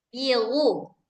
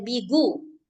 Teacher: kalau orang Arab itu gonya itu dari ujung tenggorokan sama dengan makhraj k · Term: gain